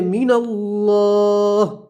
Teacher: ہا کے اوپر وقف کریں گے تو ہا کے جو زیر اسے ہم جزم سے بدلیں گے تو پڑھیں گے من اللہ، اور یہاں تنوین کا ادغام ہوگا اور گننا بھی ہوگا، ٹھیک ہے.